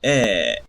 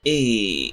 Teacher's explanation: So words that were pronounced with a ehhh start to be pronounced with a eyy. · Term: the great vowel shift